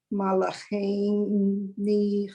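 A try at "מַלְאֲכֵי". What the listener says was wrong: Okay, so the one word, you had it twice, malache. Malache. It sounded like you added a letter to it. The yud just makes the che just that way. It doesn't really add any extra sound to it.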